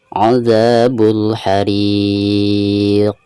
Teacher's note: Nah di sini ketika diwakofkan maka bacaan mad di sini dihukumi mad arid li sukun ya, dan dibacanya bisa 2 harokat, bisa 4 harokat, dan bisa 6 harokat. Sekaligus ujung suaranya itu ada pantulan huruf qaf ya, karena huruf qaf ini merupakan salah satu daripada huruf qalqalah, dan cara membacanya itu harus dipantulkan. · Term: qalqalah kubro